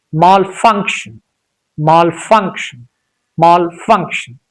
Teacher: here there is no a sound between sha sound and n sound.